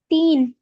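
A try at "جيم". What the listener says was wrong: একটু টেনে টান দেন। সেই যে হাত দেখিয়েছিলাম, হাত দেখিয়ে টান দেন।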